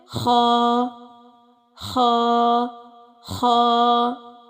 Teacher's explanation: खराश वाला हर्फ है इसको तुर्शी के साथ अदा करेंगे और यह अदना खलक से अदा होता है अदना खलक यानी हलक का पहला हिस्सा जो हमारे मुंह की · خا خراش والا حرف ہے، اس کو ترشی کے ساتھ ادا کریں گے اور یہ ادنائے خلق سے ادا ہوتا ہے۔ ادنائے خلق یعنی خلق کا پہلا حصہ جو ہمارے منہ کی طرف آتا ہے۔